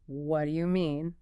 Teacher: The T often merges with the D and the Y sound, making it sound closer to what do you mean? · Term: rapid instant phonological blends